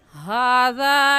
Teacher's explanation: हा के ऊपर खड़ी ज़बर है, इस वजह से इस हा को एक अलिफ की मिकदार खींच कर पढ़ेंगे। और हा का मखरज क्या है कि हलक का आखिर जो सीने की तरफ है उस हिस्से से हा निकाल कर पढ़ेंगे।